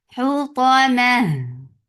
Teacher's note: when ha will get sukoon it will get rakhawa, and rakhawa is flow of sound